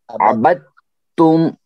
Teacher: دال کو یہاں نہیں پڑھا جائے گا، اس کو مت پڑھیے، سیدھے تا